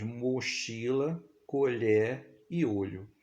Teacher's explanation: O fonema vogal O, representado na escrita pela letra O também, vai apresentar um som fechado